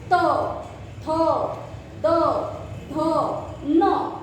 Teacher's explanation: दंत्य वर्ण, जहाँ पर जीवा का आगे का हिस्सा हमारे ऊपरी दांतों को चिपकता है अंदर से।